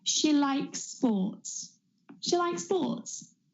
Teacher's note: we can join those two s's so the one at the end of likes and the one at the beginning of sports so it becomes almost like one sound